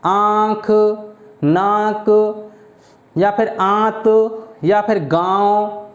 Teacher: तो ये जो चंद्र बिंदु आ रहा है ये ही अनुनासिक का वर्णन करा रहा है। आप अनुनासिक जो होते हैं ये याद रखना, नाक और मुंह दोनों की सहायता से बोले जाते हैं।